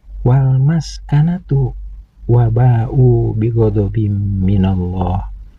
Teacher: Maka kedudukan mad tabi'i ini berubah menjadi mad wajib muttasil yang harus dibaca panjang 6 harakat.